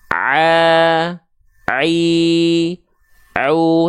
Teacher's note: huruf Ain itu dilafalkan dari bagian tengah tenggorokan